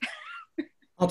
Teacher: I hear the stress on the last syllable